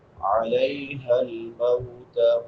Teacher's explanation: علی یا لین ہے، یا ساکن ما قبل فتحہ یعنی زبر ہے، اس کو نرمی سے پڑھیں گے